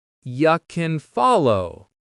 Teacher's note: Finally, the word can is never stressed here. Instead of can, it becomes kin